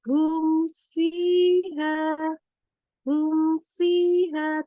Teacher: Jadi mimnya kita baca jelas dan tidak boleh ditambahkan dengung lagi di situ.